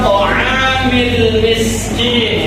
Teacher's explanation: itu alif lam qamariyah, lamnya dibaca jelas